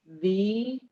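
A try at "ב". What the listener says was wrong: Not V. No, it's a bet. No, no, you don't hear the yud. You don't hear the yud. It's B, shu.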